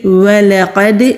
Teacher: وَلَقَدْ، واو ہونٹ گول کر کے لام کو جلدی ادا کریں گے، لا قد نہیں کریں گے ورنہ غلطی ہو جائے گی، ولقد لام کو ٹچ کر کے فوراً ہی قوف پر چلے جائیں گے۔ قوف مستعلیہ حروف میں سے ہے، دال ساکن ہے، قلقلہ ہوگا